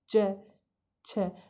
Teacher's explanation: हमारी जो मुख की वायु है वो आगे आकर रुक जाती है। कहाँ? तालु पर।